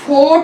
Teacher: 7th one is ओ, ये ओ की बड़ी साउंड होती है, जैसे कि हम फोर्ट में बोलते हैं। It is also back vowel between half close and half open and rounded vowel. It is back rounded vowel between half close and half open position.